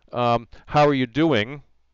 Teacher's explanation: That's sort of leaving it as a question, whereas if we say instead, how are you doing? My voice tone goes down. That's more of a statement as opposed to a question. Even though it's still a question in it, a downward tone at the end of a sentence tends to create a statement as opposed to an upward tone at the end, which tends to create a question.